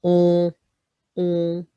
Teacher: O-N is finger on the nose, push your nose up, make a piggy nose, on. That's another nasal, what we call a nasal sound in French, which is not an English sound.